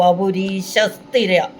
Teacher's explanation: ആ വിസർഗം കഴിഞ്ഞു വരുന്ന സയെ ഇരട്ടിച്ചു പറയണം കാരണം ആ വിസർഗ്ഗം കഴിഞ്ഞ് സ്വരാക്ഷരം വന്നിരിക്ക അല്ലേ സ എന്ന വ്യഞ്ജനാക്ഷരം മൃദു